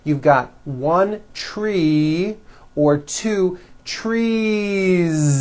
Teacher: make it plural is you continue the voicing throughout the whole word and add on a voiced Z